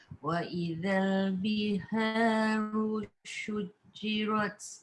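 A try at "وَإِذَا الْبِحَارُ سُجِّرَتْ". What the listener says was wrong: Sujirat ni sin. Sud bukan syud. Biharu sujirat. Hati-hati nak pergi ke syud juga tu. Dia bukan shin tapi sin. Sujirat.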